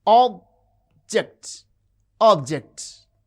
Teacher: The first syllable has prominence. It has extra force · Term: stress